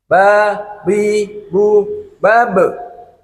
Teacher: bab ini kena kolqolah Kubro ya mantul suaranya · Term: qolqalah qubro